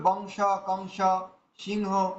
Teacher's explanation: উচ্চারণ হবে কেমন যেমন যদি সিংহ থাকে তো সিংহ হ রয়েছে অনুস্বরের পরে হ থাকার কারণে এটা অং উচ্চারণ হবে